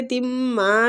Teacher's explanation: میم کو میم مشدد ہے، غنہ کریں گے اور کھینچیں گے